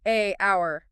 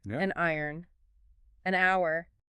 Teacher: It's clunky, it interrupts the natural rhythm. So, by adding the n, saying an iron or an hour, that consonant acts as a bridge. >> So, the breath just keeps flowing smoothly. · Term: tiny phonetic bridges